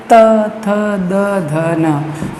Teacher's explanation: जीवा का अग्रभाग ऊपर वाले दांतों के पीछे टच करता है, उसे दंत्य कहते हैं। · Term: दंत्य वर्ण